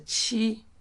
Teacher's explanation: this is the first tone here. It's a flat, high flat.